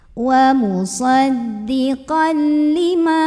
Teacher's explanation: tanwin fathahnya masuk ke lam tanpa dengung. Jadi ini musaddiqal, bukan musaddiqan tapi musaddiqal, tekan ke lam tanpa ditahan. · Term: idgham bila gunnah